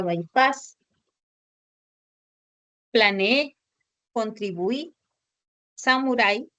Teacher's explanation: tenemos las palabras agudas llamadas también ttonas ya hemos dicho que estas palabras son aquellas que van a presentar el acento en la última sílaba